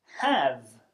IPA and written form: hæv (have)